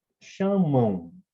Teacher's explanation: Eu tenho A como vogal e a letra M representando a semivogal U. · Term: ditongos nasais